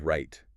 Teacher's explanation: You feel the stop but you don't hear the T.